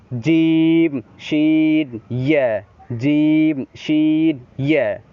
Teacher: 6 number মাখরাজ হচ্ছে জিহ্বার মধ্যখান, মধ্যখান তার বরাবর উপরে তালুর সাথে লাগিয়ে, সেখান থেকে 3টি হরফ উচ্চারণ হয়, জিম শিন ইয়া, জিম শিন ইয়া, একটু শক্তভাবে উচ্চারণ হবে, জিম শিন ইয়া।